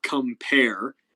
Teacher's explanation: the first bit of compare is unstressed then the pair ending is stressed